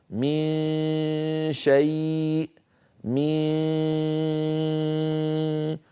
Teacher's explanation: غنه من الخيشوم وصويت من الفم